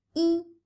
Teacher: Yi is originally in the first tone.